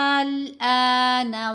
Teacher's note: الآن پڑھنا ویسے ہی ہے جیسے حمزہ زبر لام ساکن ال پڑھا جاتا ہے، لیکن چونکہ حمزہ کے اوپر مد ہے تو پھر ہم نے اس کو پہلے لمبا کر لیا، پھر لام کے ساتھ ملا لیا